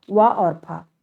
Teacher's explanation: नीचे वाला ओठ ऊपर के दांतों को छूता यानी स्पर्श करता है, इसलिए दंतोष्ठ व्यंजन कहलाता है